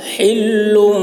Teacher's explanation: ہا کو حلق سے ادا کریں گے